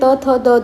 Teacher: दंत याचा स्पर्श होतो म्हणून याला आपण दंत वर्ण असे म्हणतो